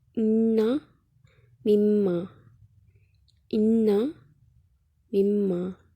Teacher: دیکھیں نون اور میم، ان کی آواز ناک میں سے ادا ہو رہی ہے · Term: گنہ